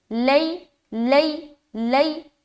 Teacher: آگے لیست النصارى، لئی، لام یا زبر، لئی، یا ساکین ہے اس سے پہلے زبر آ گیا یعنی کہ یا لین ہو گیا، نرمی کے ساتھ جلد ادا کریں گے